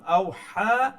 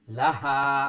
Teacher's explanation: আওহা এই হা হইল কি মিডল থ্রোটর বড় হা আমরা যেটা কই, আর লাহা এই যে হা এই হইল কি ছোট হা যেটা বটম থ্রোট থেকে উচ্চারণ হয়।